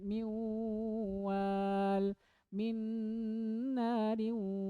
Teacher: Ada dengungnya, ditahan kurang lebih 2 harokat.